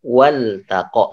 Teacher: Karena dia hamzahnya hamzah wasal, maka hamzahnya tidak dibaca.